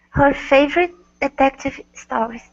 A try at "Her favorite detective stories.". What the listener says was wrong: Good. All right, nice job. Thank you.